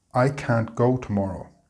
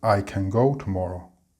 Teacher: we need to ensure we pronounce the t sound in the negative of can, can't. If you don't, then you will be misunderstood to have said the complete opposite of what you meant.